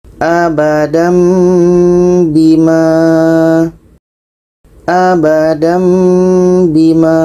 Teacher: Tanwin bertemu ba. Ini adalah dengung.